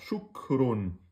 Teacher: dit on bloque le point de sortie et on lâche ch et quand vous lâcher le point de sortie il y a un petit flux d'air qui sort ch c'est ça qu'on doit entendre c'est plutôt vers la on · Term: Kef